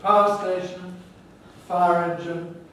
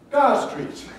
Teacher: smoothing which is the loss of the second element